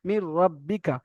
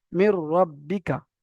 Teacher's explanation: এখানে নুনটা সম্পূর্ণ রয়ের সঙ্গে মিলে গেল, অথচ কোনো গুন্না টান টোন কিছুই হলো না। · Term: তাম